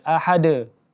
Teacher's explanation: bunyi huruf qalqalah antara bunyi a dan bunyi huruf e. Jadi tidak baca ahada, tidak dibaca ahade, tetapi antara bunyi a dan bunyi e.